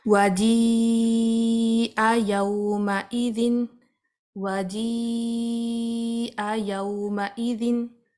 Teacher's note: یہاں یا کے اوپر آپ مدہ دیکھ رہے ہیں، مد یا کے اوپر مدہ ہے، کیونکہ حمزہ اس کے بعد آ رہی ہے تو اب ہم نے اس کو 4 کاؤنٹ سٹریچ کرنا ہے